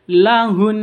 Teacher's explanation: Nun tasydid caranya ditekan, ditahan 2 harokat.